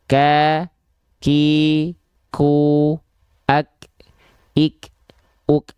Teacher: Kaf itu punya sifat hams, tapi kadarnya bukan mengalir nafas, tapi hanya berupa percikan-percikan nafas saja.